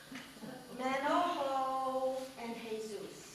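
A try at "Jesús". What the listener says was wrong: You don't pronounce the J.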